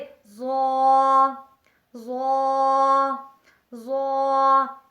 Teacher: زبان کی نوک اور ثنایا علیہ کا سرہ تو اس سے لفظ ظا ظا ظا ادا ہوتا ہے